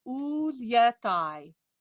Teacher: it's a shortened intensified e sound · So for instance, your very first line, you have ulietai, ulie. So you're going to put the J glide before that open E